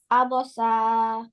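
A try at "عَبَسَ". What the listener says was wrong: Abasa. Don't stretch. Zabar zir pesh letters not stretch. Abasa.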